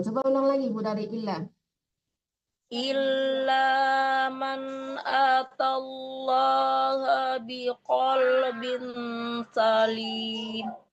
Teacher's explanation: Antara ba tanwin disamakan ke sin. Bin salim dan berdengung.